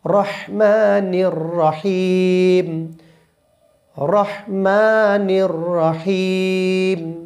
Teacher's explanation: যে বড় হা রয়েছে সেই বড় হাটা চিকন হয়, আর যে ছোট হা রয়েছে সেটা মোটা হয়। তো এখানে রয়েছে বড় হা, একটু চিকন করে বলতে হবে,